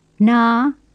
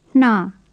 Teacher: The first has a normal N, and the second has a breathed N.